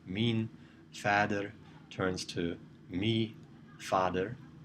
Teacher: we see a loss of n in first-person possessive pronouns